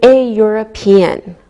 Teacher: we pronounce the E and it sounds like a Y. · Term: Y sound